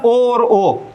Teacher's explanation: कंठोष्ठ मतलब ओ और ओ, ये कंठोष्ठ से उच्चारित होते हैं ओ और ओ।